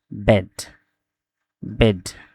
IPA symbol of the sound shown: e